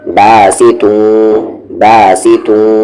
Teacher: ता पर दो पेश है तुन, लेकिन दो पेश के बाद राल है तो इख्फा होगा, यानी कि इस दो पेश की आवाज़ को हाइड करेंगे, तू पढ़ेंगे, आवाज़ को नाक में ले जाएंगे